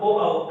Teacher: ओ औ ऐसे स्वर वर्ण है जिनका उच्चारण स्थान कंठोष्ठ है।